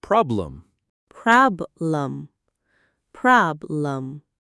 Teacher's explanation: The word is problem. Stress on prob. So the E becomes a.